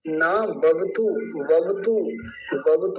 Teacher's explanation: ऐसे ये है वत तो तु नहीं बोलना व वत यानी दोनों वकार पूरे रखने है आधा नहीं करना है तो क्या बन गया पूरा शब्द नाववतु हो गया यही था